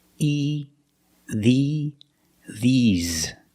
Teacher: I use the long E, like green beans. The mouth is more closed, and you smile a little bit.